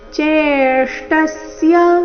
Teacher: ಚೆ ದೀರ್ಘ ಬಂದು ನಂತರ ಆಘಾತ ಮುಂದೆ ಅರ್ಧ ಶ್ರ ಮೂರ್ಧನ್ಯ ಶ್ರ ಪೂರ್ತಿ ಟ ಇವೆರಡರಿಂದ ಕೂಡಿದ ಸಂಯುಕ್ತ ಅಕ್ಷರ